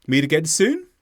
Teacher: we go up on the word soon to show it's a question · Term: intonation